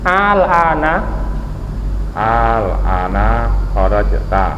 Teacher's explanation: A-nya panjang lah, tidak apa? Pengucapan A tidak dua kali tapi sekali tapi panjang. · Kalau yang setelah dikasih hamzah istifham, alifnya dibaca panjang. Karena dibacanya, tapi penulisannya tetap sama.